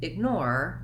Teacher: in the word ignore, we have second syllable stress. So this may be part of the challenge for you in pronouncing this word, that you have to do the length on the nor syllable, and the ig syllable is light and short.